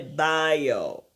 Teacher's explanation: Souvent aussi, quand vous voyez les mots avec bio, c'est bio. C'est comme s'il y avait un Y invisible, un Y invisible entre I et O. Ça fait bio. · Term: glide